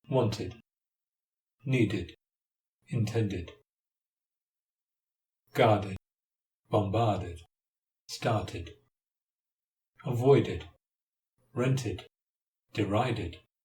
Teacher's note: So when is ed pronounced id? Answer: after the sounds t and d.